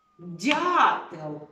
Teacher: слово в якому яке починається на перший звук це слово дятел звук перший д - м'якенький